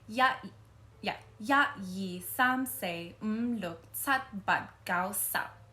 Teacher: Cantonese, I think, sounds very sa sa sa because it's all like very front of the mouth sounding